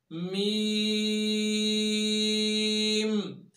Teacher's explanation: मीम दोनों होंठों के खुश्की वाले हिस्से को मिलाने से अदा होती है। और याद रखिए ये पूरा खुश्की वाला हिस्सा नहीं मिलता, यूं नहीं मिलाएंगे, बल्कि हल्का सा तरीके हिस्सात वाला हिस्सा खुश्की वाला वो टच हो जाता है।